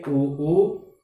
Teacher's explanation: उ बोलते हैं तो हमारा जो मुंह है, हमारे जो ओष्ठ हैं वे गोलाकृति पकड़ लेते हैं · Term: ओष्ठ्य वर्ण